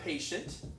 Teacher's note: 2 syllables, and I stress the first one.